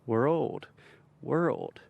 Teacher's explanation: this we're old we're old we're old we're old world and as you keep getting faster and faster eventually those two sounds just combine together and you begin to say world